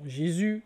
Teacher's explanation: exemple dans Jésus, le S n'est pas prononcé à la fin